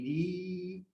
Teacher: یہ را زیر ہونے کی وجہ سے باریک پڑھی جائے گی ری، را کو باریک پڑھیں گے ری.